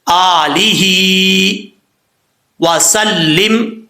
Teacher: حمزہ کے اوپر کھڑا زبر ہے، ایک الف کی مقدار لمبا کریں گے. آگے ہا ہے، ہا کے نیچے کھڑی زیر ہے، اس کو بھی ایک الف کی مقدار لمبا کیا جائے گا.